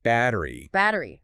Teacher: that sound might soften to a D in American English